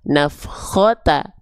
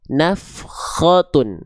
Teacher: Tapi kalau ada kurung tutupnya seperti ini, perhatikan ada kurung tutupnya seperti ini namanya jadi dommatain atau domah tanwin. Dibaca bukan cuma pakai vokal u tapi nambah en. Jadinya un, vokal konsonan un.